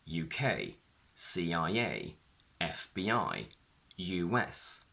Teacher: when we have abbreviations on their own, the stress is on the last letter